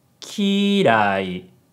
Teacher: so the pitch pattern is high low low which is the same as clean